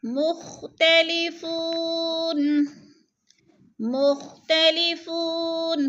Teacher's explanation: فو کو تھوڑا سا کھینچنا ہے، وہ مدہ ہے۔